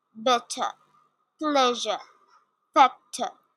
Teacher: Some words that have stress sound at the end end with the letter. This R is not pronounced